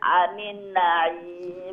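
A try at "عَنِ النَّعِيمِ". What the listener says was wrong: আনিন ওখানে আরেকটা গুন্না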